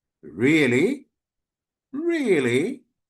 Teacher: Really with a rising intonation means that I'm asking you about the reality of what you said.